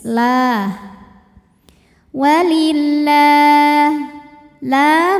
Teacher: Karena lam barisnya fathah panjang maka lam panjang dua harakat. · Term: mad thobii muqaddar